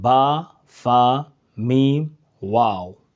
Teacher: चार हुरूफ होठों से अदा होते हैं